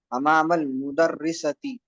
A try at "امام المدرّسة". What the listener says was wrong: جی را پر تشدید لگی ہوئی ہے. اس کا مطلب یہ کہ مدرسہ ورڈ نہیں ہے, مدرسہ ورڈ.